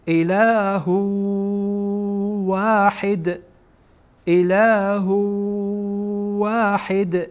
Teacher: و الهکم و الهکم و الهکم اله اله اله. اینجا بعد از این تنوین واو آمده و واو از حروف ادغام هست، یعنی ها را با واو در اینجا وصل میدین